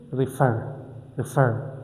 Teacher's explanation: My stress is on far, which is the final syllable.